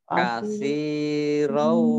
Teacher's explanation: ada fathah tanwin bertemu dengan wawu, ya. Ini disebut idgham bi gunnah